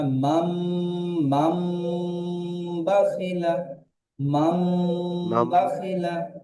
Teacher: নুন সাকিনের পরে বা এসেছে, নুন সাকিনকে মিমের দ্বারাই পরিবর্তন করে পড়তে হয়।